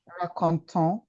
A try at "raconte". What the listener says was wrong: Raconte. Yes, that is a verb. verb, when you have a verb, the ENT in the verb conjugation is not pronounced.